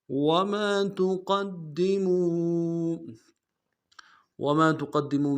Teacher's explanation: قوف کو موٹا ادا کرتے ہوئے دال کے ساتھ ملانا ہے، دال کے اوپر تشدید زور دیں گے